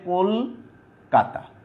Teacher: এই চলিত ভাষায় আগের যে অটা আছে, কয়ের সাথে যে অটা আছে, সেটা উকারান্ত উচ্চারণ পাবে